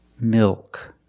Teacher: The tongue gets fatter at the bottom, it expands, and it goes up a little bit in the back. Milk. The L in milk is also a dark L.